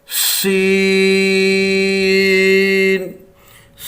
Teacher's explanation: آگے ہے سین، سین، سین زبان کی نوک دونوں دانتوں کے اندرونی کناروں سے، اس پہ سیٹی کی آواز جو ہے وہ بھی آنا چاہیے۔